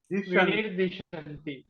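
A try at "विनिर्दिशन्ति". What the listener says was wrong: మీరేం చదివారంటే దశంతి అని చదివారు.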